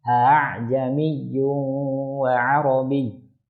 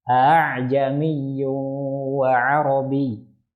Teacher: Hamzah yang pertama jelas a, tapi yang kedua dibaca tashil ringan. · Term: tashilul hamzah